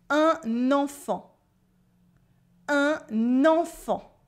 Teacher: In un enfant, you have a silent T at the end and two nasal sounds. En and fan.